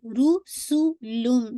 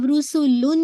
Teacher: کامل ہے. کمپلیٹلی تنوین کی آواز میم کے اندر مرج ہو رہی ہے. اینڈ دین آلسو آپ یہ کہیں گے کہ ساتھ ساتھ غنہ ہے اکمل غنہ.